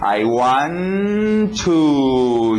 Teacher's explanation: 2 T's, eu não preciso dizer 2 T's, posso fazer um só.